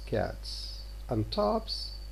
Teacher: The occurrence of the S in forms such as cats and tops can then be attributed to assimilation of the Z to the voicelessness of a preceding consonant.